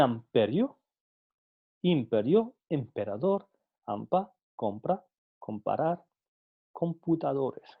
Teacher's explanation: en posición inicial de sílaba precedida de nasal, P es explosiva, presentando solo las fases de oclusión y explosión